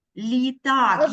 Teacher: в нас звук л у нас більш лі наступне після л після приголосного у нас стоїть звук і він дає пом'якшення першому звуку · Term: М'який приголосний